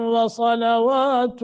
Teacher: غنہ کریں گے، وصلوات، نون تنوین کے بعد آگے پھر واو مشدد ہے تو غنہ کر کے پڑھیں گے